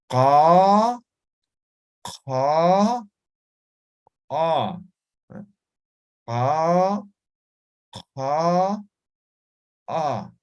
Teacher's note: Ahora, muchas veces no se puede pronunciar esto porque no estamos articulando en el lugar correcto. El lugar correcto es postvelar. Van a pronunciar desde la garganta